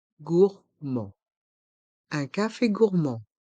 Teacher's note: dans le mot gourmand le D est muet